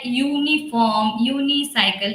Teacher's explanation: the moment we pronounce U, we get a sound of Y